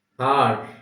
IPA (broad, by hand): ɑːr